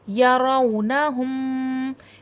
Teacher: میم پہ شد ہے، میم میں مشدد کا غنہ ہوگا